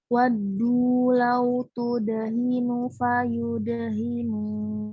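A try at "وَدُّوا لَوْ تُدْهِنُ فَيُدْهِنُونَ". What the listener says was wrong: Hati-hati jangan tudahin tadi, jangan isbah ya. Kalau ingat kemarin di pelajaran tahdirul qiraah di matan mufid itu isbah. Melebih-lebihkan huruf. Jadi kesana nambah huruf mat. Tadi saya dengar ya, nanti bacanya lau tudhinu.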